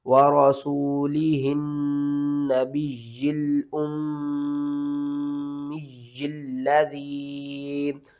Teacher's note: یہاں پر آپ نے نون مشدد کے اوپر غنہ کرنا ہے، یا کے اوپر سختی کرنی ہے، یا کو 2 بار پڑھنا ہے